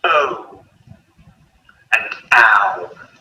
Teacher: each sound ends with a U sound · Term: diphthong